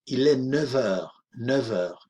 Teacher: cuando hacemos el enlace con heure, vamos a pronunciar una V, v. Il est 9 heures, 9 heures.